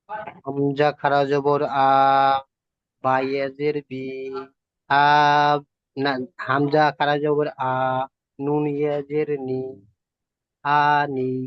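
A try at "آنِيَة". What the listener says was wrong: নুন ইয়া জের নই, নুন জের নি, ইয়ার উপরে সাকিন নেই। সাকিন থাকলে যুক্ত হতো।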